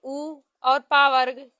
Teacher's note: उ और पा वर्ग ओष्ठ से बोले जाते हैं।